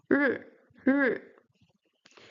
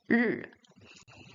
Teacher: The R sound in Chinese is retroflex, so you have to curve your tongue backwards when you pronounce it.